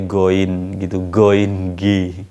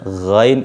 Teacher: Jadi ghain malah jadi goin gitu, goin g ya. G itu pangkal lidah, kalau ghain itu tenggorokan, sudah masuk tenggorokan.